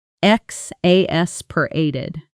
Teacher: notice the stress falls on the third syllable